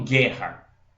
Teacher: quando eu falo guerra eu não escuto esse u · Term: dígrafo